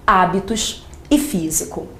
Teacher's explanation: Observe que nessas palavras o acento está aparecendo na antepenúltima sílaba. Se o acento aparece na antepenúltima, você vai me dizer que essas palavras são palavras proparoxítonas e todas as palavras proparoxítonas são acentuadas. · O acento está na antepenúltima. Então, não é a última sílaba delas que tem o som mais forte, e sim a antepenúltima. Por isso elas são proparoxítonas.